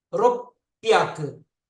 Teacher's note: The two sounds roku and hyaku come, and it turns to ropyaku. It becomes plosive. The hyaku becomes pyaku.